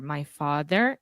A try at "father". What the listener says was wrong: In the word father, this is the A sound. So just like prato, chato, rato, father. I heard fode.